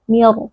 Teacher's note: Huruf Ra dengan sukun di sini dibaca dengan suara yang berat meskipun huruf sebelumnya memiliki kasrah. Mengapa? Karena diikuti oleh huruf "isti'la", yaitu huruf Saad.